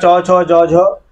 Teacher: इनका उच्चारण जो है तालू से होगा